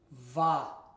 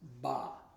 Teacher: Now, the bet without the dagash or dagash here makes a va sound. It's the letter bet, but it's softened and it makes a va sound. So with the patak, it would be va.